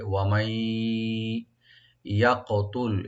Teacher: ওয়া মাই ইয়াকতুল, ওয়া ওপেন রাখবেন, মাই ওপেন রাখবেন মা, এখানে নুন সাকিন এর সাথে এদগাম হয়ে ওতে গুন্না সহকারে পড়া হবে। ওয়া মাই ইয়াকতুল, ইয়া ওপেন রাখবেন, কাফটা একটু কলকলা করতে হবে, ইয়াকতুল লামে কলকলা হবে না।